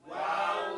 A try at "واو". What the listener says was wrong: Your whole mouth, move it. Wow. Wow. You cannot be lazy. Wow. Just like you say, meow. You hear that ow? Wow.